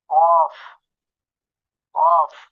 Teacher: 4 নম্বর মাখরাজ জিহ্বার গোড়া তার বরাবর উপরের তালুর সঙ্গে লাগিয়ে কফ কফ। 5 নম্বর মাখরাজ জিহ্বার গোড়া হতে একটু আগে বাড়িয়ে তার বরাবর উপরের তালুর সঙ্গে লাগিয়ে কাফ কাফ।